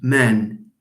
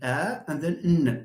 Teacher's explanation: all the sounds in man are voiced, and then a, and then n. There is vibration. But if I try to whisper to pronounce it by means of a whisper, of course it will be voiceless.